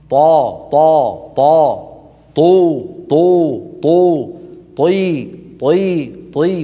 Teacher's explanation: وهي حرف مفخم مستعلن مطبق.